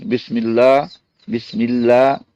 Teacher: یہاں لام اللہ کا باریک ہے کیونکہ بسم اللہ میم کے نیچے زیر ہے، ورنہ زبر پیش ہو تو لام موٹا پڑا جاتا ہے۔